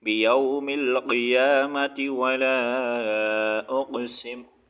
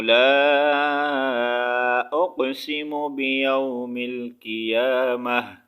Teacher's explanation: اور اگر یہاں پر وقف نہیں کریں گے، اگر ہم ایک ہی سانس میں ملا کر پڑھنا چاہیں گے تو پھر تا کے نیچے زیر اور تا ہی پڑھیں گے